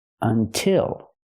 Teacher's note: until has two syllables but the stress is on the second syllable